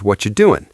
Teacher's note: What are you doing becomes what you doing.